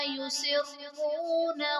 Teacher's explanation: یسرون میں را پر پیش ہے تو یہاں پر را کو پر یعنی موٹا پڑھا جائے گا